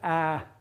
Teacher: A is not round and is low and is not back, that is its front